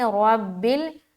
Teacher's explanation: لام کو ہم بالکل باریک نکالنا ہے، را کو موٹا کریں گے